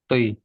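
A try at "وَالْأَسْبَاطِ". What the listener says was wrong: Harus beda sama ta. Al asbati beda.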